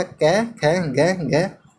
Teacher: इन सभी का उच्चारण स्थान कंठ होता है।